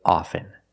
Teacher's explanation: with both words I don't pronounce a t